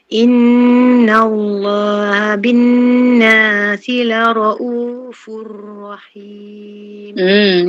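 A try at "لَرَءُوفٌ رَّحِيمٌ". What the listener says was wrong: Okay, raw tu jangan banyak sangat dia punya apa? Okay, jangan banyak sangat getar okay.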